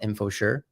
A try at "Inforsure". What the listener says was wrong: Inforsure. Everyone says info, but it's Infor.